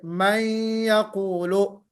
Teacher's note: मैं यकूलू में कहते हुए थोड़ा सा नून की आवाज आ रही ना